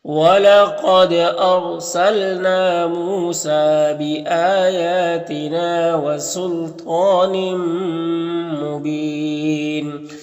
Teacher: طا حروف مستعلیہ میں سے پر پڑھیں گے، کھڑا زبر ہے، ایک الف کے برابر کھینچیں گے